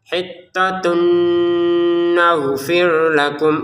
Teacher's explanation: Jadi didengungkan hittatun, itu di rongga hidung ya, di rongga hidung kita kerasa, silahkan dirasa-rasakan sendiri. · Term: dengungan